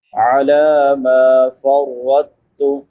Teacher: علی ما فرطت، عین حلق کے درمیان سے ادا ہوتی ہے، میم کے بعد الف مدہ ہے، الف سے پہلے زبر ہے، اس کو ایک الف برابر لمبا کریں گے۔ فرطت را پر پڑی جائے گی کیونکہ را کے اوپر زبر ہے۔